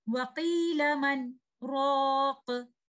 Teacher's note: وَقِيلَ مَنْ رَاقَ. Because there is a sakt, a breathless pause, both letters, letter ra or letter noon, are not meeting with each other. So there is no idgham.